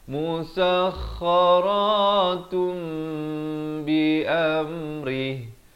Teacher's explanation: Di sini hukum iqlab sama macam tadi, ditukarkan daripada bunyi nun musakharatun jadi musakharatum. Tapi jangan lupa panjangkan dua harakat.